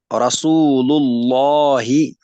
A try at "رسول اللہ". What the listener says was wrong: یہ والا لام پر ہو گیا باریک. یہ والا ٹھیک، اس کو کیوں باریک پڑا،